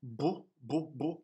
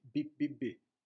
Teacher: b, b, b, with the lips protruded, and b, b, b, with the lips retracted.